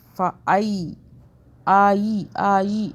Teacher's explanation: ہم کھینچ نہیں رہے، مدہ نہیں کر رہے، یہاں پہ ہم لین کر رہے ہیں، یا لین ہو رہا ہے، یا ساکن جو ہے یہ لین ہو رہا ہے، یعنی کہ ہم یا کو اکنالج کریں.